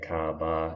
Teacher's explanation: you're sort of dropping off the r at the end of most of your words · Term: non-roticity